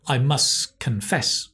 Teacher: But must confess, the T disappears because there's a consonant in confess.